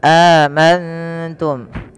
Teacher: adanya nun sukun bertemu dengan huruf ta, maka nunnya disamarkan kepada huruf ta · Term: ikhfa hakiki